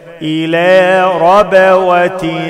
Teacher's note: أعمل قلقلة في الباء